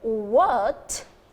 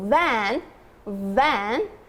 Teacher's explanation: our upper teeth touch the lower lip